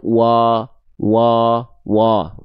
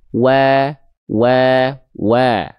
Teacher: kalau vokal A tipis, karena kalau tebal dia akan condong seperti O. Nah, kalau vokal A maka tipis.